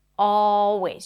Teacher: You don't have to pronounce the L sound if it's tricky for you. Always. Just an open a sound.